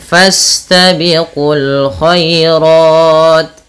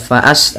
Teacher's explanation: tidak dibaca hamzahnya karena dia termasuk hamzatul wasal